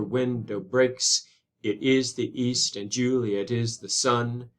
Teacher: regular straightforward iambic pentameter five feet unstressed stressed unstressed stress